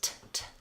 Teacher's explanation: If I did say this T sound, talented, I would want to use the same T I use at the start of words, t, with a little puff of air, talented. So I don't want to flap here like in better or ladder.